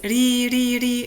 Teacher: it's light because of the kasra